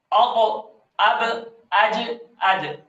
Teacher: صرف جنبش دینی ہے اور حرکات ثلاثہ کا شائبہ اس میں نہیں آنا چاہیے ۔ اب تو اس جنبش دینے کو قلقلہ کہا جاتا ہے۔